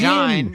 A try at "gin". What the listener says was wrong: Gin. We don't say gine. Do we say gine? No, we say gin. Just like Lynn in Linux.